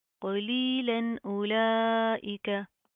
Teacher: Simple इजहार होगा, हम नून की आवाज़ को ज़ाहिर करेंगे। यहाँ पर हमने कोई इख्फा कोई गुन्ना नहीं करना, इसको हम इस तरह नहीं पढ़ेंगे क़लीलन उलाइका, नो।